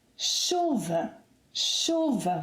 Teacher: with the stress on the 2nd syllable to the last, meaning that the final ‘a’ is unstressed